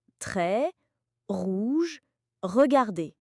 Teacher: Il est guttural, produit au fond de la gorge. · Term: la prononciation du R